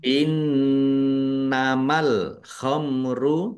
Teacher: nun tasdid dibaca gunnah atau mendengung ya, ditahan biar tampak mendengungnya